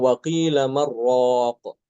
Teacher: Waqilaq tanpa saktah ya. Jadi langsung diidgamkan nunnya ke dalam ro tanpa guna